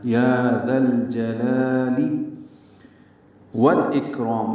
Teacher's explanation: واو کو لام سے ملانا ہے. یہ لام بھی پڑھا جائے گا جیسے ذل جلال میں لام پڑھا گیا.